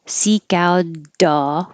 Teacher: this T will change to a D because it's between two vowels